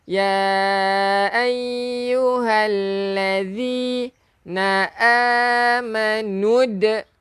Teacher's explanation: huruf zal, hujung lidah keluarkan sikit